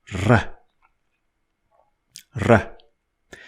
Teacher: So it is a flapping or trilling R.